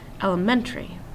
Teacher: We kind of blend the two T-A and R-Y together, but the M-E-N is what is emphasized.